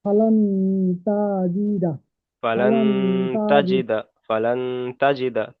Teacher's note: তাই নুন সাকিনের আওয়াজকে নাকে তুলে এক আলিফ পরিমাণ গুণনা করে পড়তে হবে।